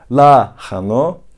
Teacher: sinema dedim ananas dedim lano tahini i ile birlikte telaffuz ettiğimde h'yi daha genizden daha derinden çıkarttığım